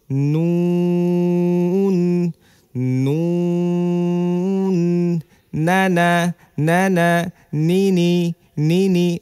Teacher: জিহবার আগা তার বরাবর উপরে তালুর সঙ্গে লাগিয়ে উচ্চারিত হয় নুন